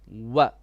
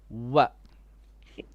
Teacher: With the lips, makhraj of waw is from the lips